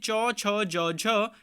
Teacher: यह चारों हमारे स्पर्श संघर्षी व्यंजन होते हैं